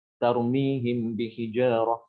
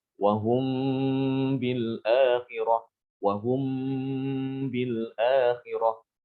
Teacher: Maka huruf mim itu dibaca ikhfa, disamarkan bacaannya. Ketika ketemu dengan huruf ba disertai dengan gunnah. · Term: ikhfa syafawi